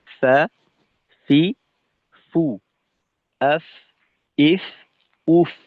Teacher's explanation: মাখরাজে আস্তে ধাক্কা লাগার কারণে বাতাস চালু থাকে, এর সাথে আওয়াজটা একটু ছোট হয় বা একটু ক্ষীণ হয় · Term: হামস